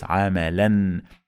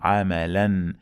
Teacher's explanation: fathas on the last letter followed by alif, we add the sound of noon to the end of the word. It is like this, amalan. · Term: tanween bil fath